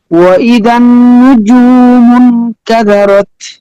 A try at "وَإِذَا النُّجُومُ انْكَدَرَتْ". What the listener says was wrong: এখানে গুণ করেন না। আবার বলেন তো।